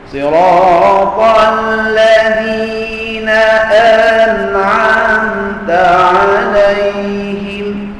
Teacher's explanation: An'amta ada dengung, ya, sebab huruf nun dan huruf mim tidak sunyi daripada sifat dengung